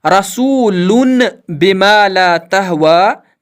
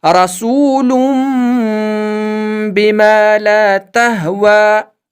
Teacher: تو دوستو اب ہم نے سیکھا کہ چاہے یہ چھوٹا سا میم یہاں ہو یا نہ ہو، جب بھی نون ساکن اور تنوین کے بعد حرکت والا با یعنی زبر زیر اور پیش والا با آئے، تو وہاں نون ساکن اور تنوین میں جو نون کی آواز ہے اس کو میم کی آواز سے بدل کر گنہ اور اخفا کے ساتھ پڑھیں گے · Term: اقلاب